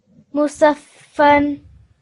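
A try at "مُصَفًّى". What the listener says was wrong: Musaffan. Just make it a bit longer because it's going to be a vertical fatha. Musaffa.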